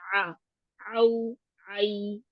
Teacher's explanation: आउ हलक के दरमियानी हिस्से से इसको निकालिए